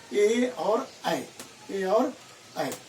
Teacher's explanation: कुछ ऐसे स्वर है जो कंठ और तालव्य दोनों को सहारे से बोले जाते हैं।